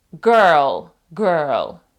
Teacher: американці замість того щоб сказати Girl вони вмішують туди звук р